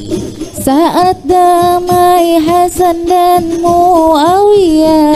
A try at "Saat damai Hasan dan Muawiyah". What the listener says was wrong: Jangan naik nadanya.